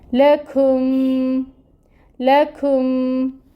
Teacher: کاف کے اوپر پیش ہے، پیش کے لیے اپنے ہونٹوں کو گول کریں، او کی ساؤنڈ آئے گی اور ایک حرکت ہی اس کو پڑھا جائے گا، اور کاف کو میم کے ساتھ ملانا ہے۔ لکھم، کاف میں ہمس ہوتی ہے، کوشش کریں کہ وہ بھی اس کے اندر لے کے آئیں۔